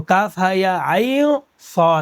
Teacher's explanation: کاف ہا یا عین صاد، عین صاد نہیں پڑھا میں نے، غور کیجیے گا، عین صاد میں نے نہیں پڑھا ہے، عین صاد پڑھا ہے، یعنی لاسٹ میں جو عین کے نون آیا ہے اس کو ہم نے ناک میں چھپایا ہے